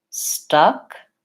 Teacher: Stuck, very central. Relaxed tongue, not very open. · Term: schwa vowel